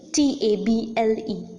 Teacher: the first syllable is more prominent than the second syllable hence the first syllable is known as the stressed or the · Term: stressed or the accented syllable